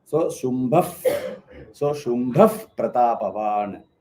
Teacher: that Visarga will change to If sound, like F, Fa sound.